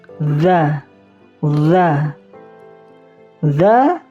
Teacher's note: Ujung lidahnya itu berada di ujung gigi siri atas. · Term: huruf dza